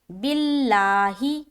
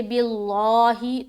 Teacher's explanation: لفظ اللہ کا لام باریک پڑھیں گے، باللہ۔ اب یہاں پر کوئی موٹا کر دے باللہ تو غلط ہو جائے گا۔